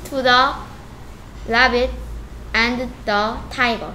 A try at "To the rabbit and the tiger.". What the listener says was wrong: He says, 어, 이 부분 조금 더 빠르게 해보자. To the rabbit and the tiger.